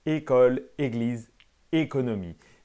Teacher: l'accent aigu é il est sonore et fermé